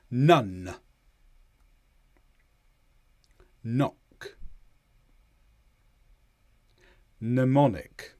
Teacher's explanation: All of the air gets forced through your nose, and then there is a release. So it's not like l, where some air gets through.